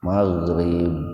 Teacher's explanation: Nah kalau mau berhenti di situ kan ada wakaf jaiz itu, ba-nya dibaca qalqalah, dipantulkan.